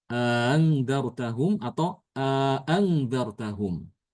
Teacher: Imam Hisyam dia bacaannya dengan menambahkan alif. Di antara kedua hamzah tad ditambahkan alif.